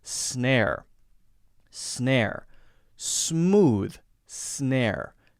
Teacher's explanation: notice there's no space between the s sound and then the consonant